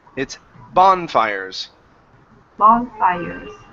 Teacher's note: So, our stress here is at the very beginning. Instead of bonfires, it's bonfires.